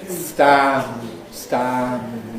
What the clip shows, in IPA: stæ̃m